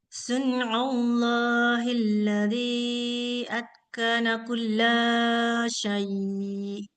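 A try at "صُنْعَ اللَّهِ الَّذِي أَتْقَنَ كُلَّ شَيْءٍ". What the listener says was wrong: Tuh, kerasa nggak? Panjang lahnya. Kulla syai'.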